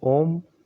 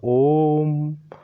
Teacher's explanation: ये हम लोगों का प्लुत स्वर होगा, इसको हम लोगों को लंबा खींचकर बोलना पड़ेगा ओम, इस तरीके से।